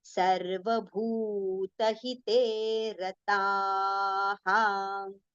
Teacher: everywhere bhu we have to recite with long pronunciation. Okay, it is with long u vowel sound. So it has to be prolonged.